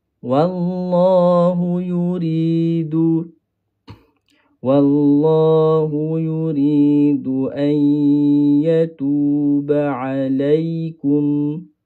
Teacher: huruf wau ini sifat asal dia nipis. Ha bila masuk kepada huruf lam dia kena kekalkan nipis dia tu. Yang kena tebal adalah huruf kalimah lam yang kedua pada kalimah Allah.